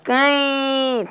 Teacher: Nós não vamos ter o M aqui, porque ele vai nasalizar o I também, ó. Cãe, tudo ficou nasal.